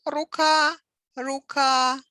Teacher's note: in singular has stress on last syllable